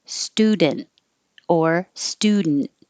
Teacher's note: The T and the D are made in the same place behind the top teeth, which is the same place as the N.